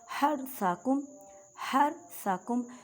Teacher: حرثکم، حرثکم، ہا کو ادا کرتے وقت خیال رکھیں کہ حلق کے درمیان والے حصے سے ادا کریں. را ساکن سے پہلے زبر ہے تو را کو موٹا پڑھیں گے